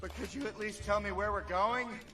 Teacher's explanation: so there is a clear rise at the end of the sentence